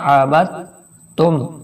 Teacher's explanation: با کو ہم تا سے ملائیں گے